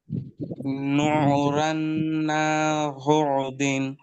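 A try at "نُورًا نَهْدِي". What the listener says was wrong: না হ দিন নয়, না। নুন হা জেবার না, দাল ইয়াজের দি। নূরান নাহদি।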